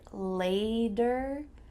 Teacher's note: Sounds like a D here and this is common in American English